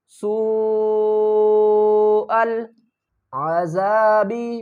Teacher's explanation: بڑی مد ہے، 3 سے 5 الف کی مقدار کھینچ کر پڑھیں گے